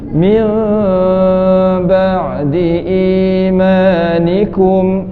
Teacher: nun mati bertemu dengan ba, hukumnya iqlab, renggangkan bibir.